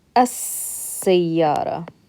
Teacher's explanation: We're going to skip this lam and we're going to pronounce the seen. So it becomes as-sayyara, right?